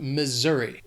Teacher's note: That S is gonna have more of that Z sound,